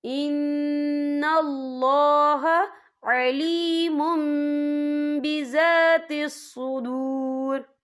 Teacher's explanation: تنوین کے بعد جو ہے با آ رہا ہے، تو یہاں پر اقلاب ہوگا یعنی تبدیلی ہوگی، تو ہم پچھلے میم کو اگلے میم کے ساتھ ملا کر پڑھیں گے اور ہم یہاں غنہ بھی کریں گے۔